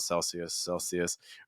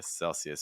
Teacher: do you hear people using more of a schwa sound, Celsius, or do you hear people using more of a short I, Celsius?